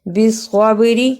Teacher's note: صاد کو ادا کیا موٹا کر کے تھوڑا سا اور با پہ قلقلہ بھی کیا